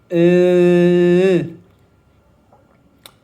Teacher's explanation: So that was an L sound. Right, I placed my tongue on my front teeth and that created an L sound.